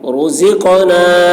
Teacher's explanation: قاف میں قلقلہ یعنی قاف کی آواز ڈبل نکلے گی. رزقنا من قبل نون میں اخفا اور قاف کی آواز موٹی ہوگی، با میں قلقلہ یعنی با کی آواز ڈبل نکلے گی.